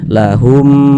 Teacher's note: dua tapi kok bacanya cuman satu begitu karena dia ini idgham Jadi huruf mim yang sukun ni dia melebur dia masuk ke huruf mim yang ada harakatnya ini begitu Jadi bunyinya ya cuman satu begitu lahum nah kemudian